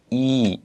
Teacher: 한글은 그냥 이이지만은 아랍어에서는 이 이렇게 길게 발음을 해주시면 됩니다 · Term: 이의 장모음